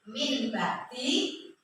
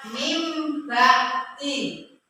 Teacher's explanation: Apabila ada nun sukun atau tanwin bertemu dengan huruf ba, maka dibaca dengan iqlab. Hukum bacanya iqlab, yaitu diganti dengan huruf mim. Contohnya min bakti dibaca mim bakti, ya.